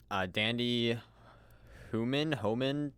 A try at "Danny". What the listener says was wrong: Danny, not Dandy. No, you said Dandy.